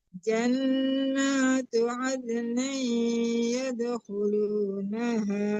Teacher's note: jangan ada nin tapi ada ni dengung itu ya disamarkan ke iya dan berdengung.